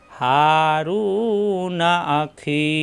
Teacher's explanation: এখানে মনে মনে সাকিন ধরে, জেরের বামে ইয়া সাকিন মাদের হরফ একালিপ টান হয়ে গেছে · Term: মাদে ফাসলি